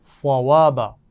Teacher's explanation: صوابا صاد کو موٹا پڑھا جائے گا اور واو کے مخرج کا خیال رکھیے، اس میں دانتوں کا استعمال نہیں کرنا بلکہ ہونٹوں کو گول کرتے ہوئے ادا کرنا ہے. ایک دفعہ پھر ہم اس آیت کو پڑھیں گے.